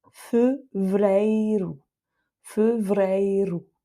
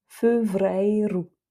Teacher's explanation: Et à chaque fois, ce sont des R roulés qu'il y a à l'intérieur